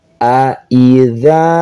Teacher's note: dza di ujung lidah ya bukan za bukan ja